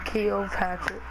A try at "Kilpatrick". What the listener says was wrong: Stop saying it like that. It's not kill as in kill. That's the way you're saying it.